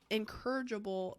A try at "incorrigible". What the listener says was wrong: It almost sounded like you said incorrigible, like you're encouraging them. I feel like you have to throw an emphasis because they're kind of similar. They kind of sound similar, and they're spelled super different, so it's kind of funny.